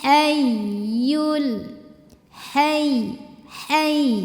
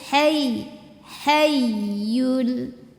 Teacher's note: ke Ya sambil agak digas sedikit naber namanya jadi kita meninggikan intonasi suara kita untuk ya tasydid atau wau tasydid ya tapi dengan catatan ya tasdid atau wau tasydidnya tidak didahului